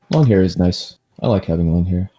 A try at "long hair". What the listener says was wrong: I need you to go ahead and repronounce that word. Yes, make sure you add the G. We both know that we hate people that don't pronounce the G in that word. No. long. Long.